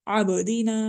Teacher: با پھر قلقلہ حروف میں سے ہے، ساکن ہو رہی ہے، اس لیے ہم اس کو قلقلہ کے ساتھ پڑھ رہے ہیں